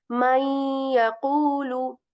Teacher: We are not saying may yaqulu, rather we are saying may yaqulu. The nasal sound of noon sakin is still there. So this idgham, this type of idgham is called idgham with gunna.